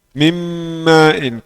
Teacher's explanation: Nun masuk dalam mim mim main. Karena semuanya ini idgham kamil. Jika idgham kamil jadi huruf yang kedua bertasydid.